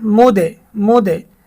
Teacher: এই 5 হরফে জজম হইলে কলকলা অর্থাৎ প্রতিধ্বনি করিয়া পড়িতে হয়, অর্থাৎ প্রতিধ্বনি হবে, আওয়াজটা ডাবল হবে